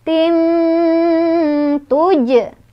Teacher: Cara bacanya samar sambil berdengung. Samarnya lebih besar dibandingkan dengan dengungannya. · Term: ikhfa